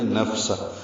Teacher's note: فا ساکن پہ ہمس ہے اور وقفاً ہا ساکن پہ بھی ہمس ہے ، نفسہ، سانس جاری رہے گی پڑھتے ہوئے، اور ساکن بھی